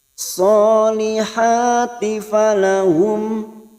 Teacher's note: mim sukun idhar safawi kita baca jelas tanpa mendengung karena bertemu hamzah